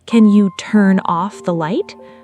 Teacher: Stress on off, not turn.